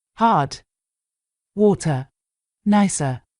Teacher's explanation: When it comes to England, Wales, Ireland, but not Scotland, Australia, New Zealand, India, and probably a bunch of other countries, rhotic accents are not really a thing. So, people tend not to pronounce the R. This is how everyone else does it, in UK English, for example.